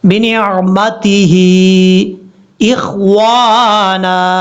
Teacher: ہا کے نیچے کھڑی زیر ہے اور اوپر مد بھی ہے، مد منفصل کہا جاتا ہے اس کو، 2 سے 2.5 الف کے برابر آپ نے اس کو لمبا کرنا ہے